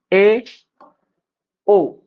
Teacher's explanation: है बंद होत नाही परंतु अर्धी बंद होते तथा उपर नीचे के दात थोडे थोडे दूर होते है खुलते है अर्थात आधे आधे ही बंद रहते है तब अर्धसवृत स्वर उच्चारित होते है